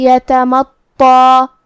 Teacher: مد الف اپنے پیچھے والے حرف کا حکم لیتا ہے تفخیم میں اور ترقیق میں، تو ہم طا کو اور مد الف کو دونوں کو بھاری آواز میں پڑھیں گے